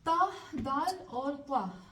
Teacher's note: ता दाल और त्वा, ये तीनों के मखरज जो है वो सेम है